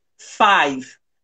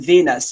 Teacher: labial lips plus dental teeth like a combination of your lower lip and your upper teeth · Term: labio Dental